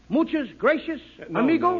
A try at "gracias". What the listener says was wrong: No, no, no. Not gracious. That word is gracias. You see, in Spanish, the C is pronounced th.